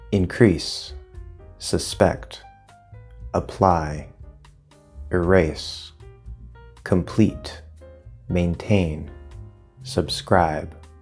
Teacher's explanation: many 2-syllable verbs are stressed on the second syllable, not the first